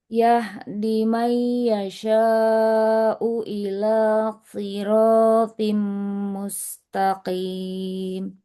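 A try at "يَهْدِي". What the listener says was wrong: Yahdi huruf dalnya kelewat panjangnya.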